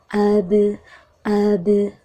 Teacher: bunyi pantulannya setengah dari harokat vokal fathah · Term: huruf qalqalah